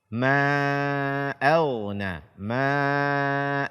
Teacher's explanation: Kaum muslimin dan muslimat, pemirsa Asil TV yang dimuliakan oleh Allah Azza wa Jalla, pada ayat yang mulia ini juga ada hukum yang berulang, yaitu mad jaiz munfasil, jangan sampai kurang daripada 4 harakat.